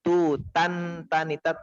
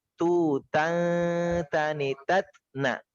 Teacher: ketika fathatain atau semua tanwin ya bertemu dengan huruf ta, maka dibaca samar nunnya. Bukan tutan tanitat, tapi tutan tanitat na.